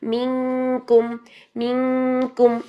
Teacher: सबसे पहला स्टेप कि पहले हर्फ की हरकत पिछले हर्फ की हरकत को अदा करके अगले हर्फ की डायरेक्शन सेट कर रहे हैं, और सेट करते ही आपने नून की आवाज़ को छुपा लेना है। ना ही नून का इजहार हो, ना ही नून का इदगाम हो। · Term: इख्फा